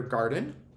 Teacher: you listen to that second syllable and it's that schwa sound that unaccented vowel sound